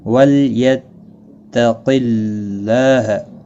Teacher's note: جائے گا، ولیتق اللہ قاف مستعلیہ ہے پر پڑھا جائے گا، اللہ کا لام زیر کی وجہ سے باریک پڑھا جائے گا ، اس کے اوپر کھڑی زبر بھی ہے ایک الف کے